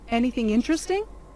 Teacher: And the word stress is on interesting.